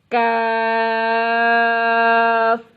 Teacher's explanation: کاف زبان کی جڑ اور تالو کے سخت حصے سے ادا ہوتا ہے۔